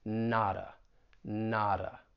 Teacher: I'm from the United States so I'm going to pronounce this with a flap T it's going to sound like a soft D